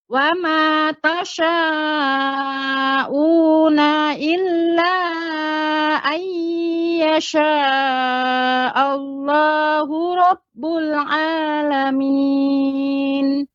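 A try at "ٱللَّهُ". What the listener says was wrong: Ini pada kata Allah. Allahnya dibaca dengan tafkhim tebal. Allah, bukan Allah, bukan Allah, enggak monyong. Tapi Allah. Allah.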